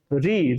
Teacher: री री का उच्चारण करोगे तो आगे वाला जो हिस्सा है जीभ का वो ज्यादा प्रयोग किया जाता है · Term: अग्र स्वर